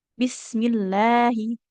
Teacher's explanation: Kan itu ada lafadz Allahnya ya. Tapi karena huruf sebelumnya mim berharokat kasroh jadi dibacanya tipis